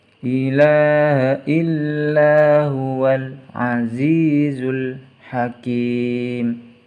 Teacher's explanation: Kinya dibaca panjang karena ada harokat kasroh bertemu dengan ya sukun